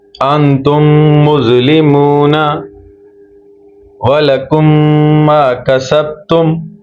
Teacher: پہلا میم دوسری میم میں داخل ہو جائے گی اور غنہ کے ساتھ پڑھا جائے گا